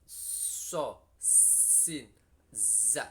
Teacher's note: keluar dari antara ujung lidah dan halamannya gigi muka 2 yang atas · Jadi suaranya huruf 3 ini diproses di dalam ruangan yang sempit antara ujung lidah dan halaman dalamnya gigi muka yang atas. Antara ujung lidah dan gigi ini belum sampai menempel atau bertemu, bahkan hanya melusnya. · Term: shofir